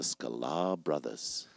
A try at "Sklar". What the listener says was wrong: I'm like, did he add a syllable to my last name?